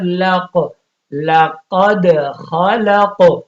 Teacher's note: یہاں پہ بھی قاف پہ بھی قلقلہ اور دال پہ بھی قلقلہ. کیوں کہ قلقلے میں یہ بھی یاد رکھو قلقلہ تبھی ہوتا ہے جن حروف پہ قلقلہ ہے جو قطب جد یعنی قاف طا با جیم دال, یہ 5 حروف پہ قلقلہ ہوتا ہے.